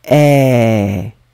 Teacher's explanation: Et quand je prononce le verbe être, ici c'est beaucoup plus ouvert